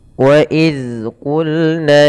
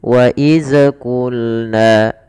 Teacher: Zal tempat keluarnya adalah dari ujung lidah kita menempel dengan gigi seri atas. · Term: huruf zal